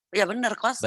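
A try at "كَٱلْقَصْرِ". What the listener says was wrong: Benar kalau kosor. Kalau kosor tapi bukan kalau koser. Innaha tarmi bisyararin kal kosor. Kosor. dikosor. Dikosor kan bukan dikoser. kosor O.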